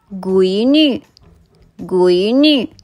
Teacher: goi කියන වචනේ first tone එකෙනොත් new කියන වචනය neutral tone එකිනුත් තමයි ශබ්ද කරන්නේ